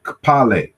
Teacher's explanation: this is the simultaneous articulation of K and P · this is a simultaneous articulation of K and P. And so in the Jalgu language, also in West Africa, they say kpale, to be white. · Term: KP sound, the KP sound